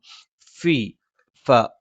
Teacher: മേലെ മുൻപല്ലിന്റെ താഴ്ഭാഗം താഴെ ചുണ്ടിന്റെ പള്ളയിലാണ്